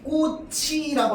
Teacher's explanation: 예를 들어서 꽃이라고 하면 발음이 어떻게 돼? 꽃이라고 하면서 치읓이 다음 글자로 연음돼서 발음되죠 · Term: 연음 현상